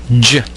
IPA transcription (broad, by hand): dʒ